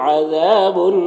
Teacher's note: عذا میں الف مدہ ہے، ایک الف کے برابر کھینچیں گے